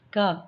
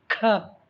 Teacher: K अल्प प्राण है, Kh महाप्राण है.